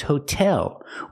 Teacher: the T does not change to a fast D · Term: T sound